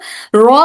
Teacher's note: जुबान का आगे का हिस्सा हिल रहा है। अगर वाइब्रेशन ज्यादा हो तो हरफ र की गलती हो सकती है।